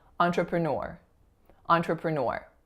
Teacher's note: it's that final syllable that's receiving the primary stress